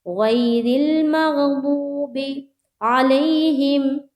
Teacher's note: را کو لام سے ملاتے ہوئے را کو باریک رکھیں گے